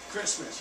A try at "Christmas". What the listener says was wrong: I pronounce the T, Christmas. Don't leave the T out of Christmas.